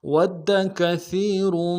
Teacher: ود کثیر، واو کو دال کے ساتھ ملانا ہے، دال کے اوپر تشدید زور دیں گے، کاف کو نرم سے ادا کریں گے، سا کو باریک ادا کرتے ہوئے یا کے ساتھ ملانا ہے